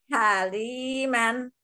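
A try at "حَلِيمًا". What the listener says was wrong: Oke.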